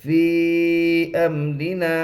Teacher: را کے نیچے زیر ہے اس لیے را باریک ہوگی · الف سے پہلے زبر ہے اس لیے الف مدہ ہوگا. الف مدہ کو ایک الف کے برابر کھینچ کر پڑھے